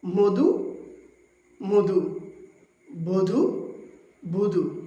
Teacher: আজকে আমরা দেখব অধ্বনি উচ্চারণের 5টি সংবৃত নিয়ম। নিয়ম 1, শব্দের শুরুতে যদি অধ্বনি থাকে এবং এর পরে হ্রস্ব-ই, দীর্ঘ-ই, হ্রস্ব-উ কিংবা দীর্ঘ-ঊকার থাকে তবে আদ্য অধ্বনির উচ্চারণ ওকারান্ত হয়ে যায়।